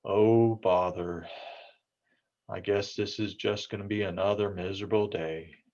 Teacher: You can hear that slowed speech, a little bit of the decreased volume, definitely the decreased inflection, just the flatness of the speech.